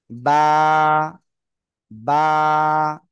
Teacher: দুই ঠোঁটের ভিজা অংশ থেকে উচ্চারণ হবে